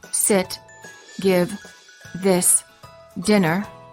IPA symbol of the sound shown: ɪ